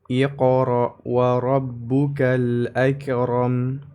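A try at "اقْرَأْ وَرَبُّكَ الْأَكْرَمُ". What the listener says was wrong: Nah, hati-hati, bukan akram. Huruf kaf jangan dipantulkan. Jadi jangan akram, namun dibaca dulu dengan sifat syiddah lalu ditambahkan dengan sifat hamas ya. Contoh, Iqra wa rabbukal akram.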